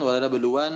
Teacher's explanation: Nunnya tahan, wala nabluwan, terus mimnya pun tahan ya